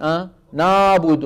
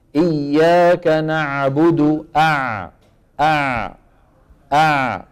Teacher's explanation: لابد من ايه من رجوع لسان المزمار وتضيق الحلق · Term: العين